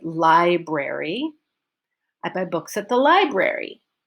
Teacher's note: library is my focus the stress is on LY library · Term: focus word